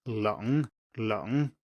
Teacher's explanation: this is just a central easy relaxed uh there is nothing weird about this sound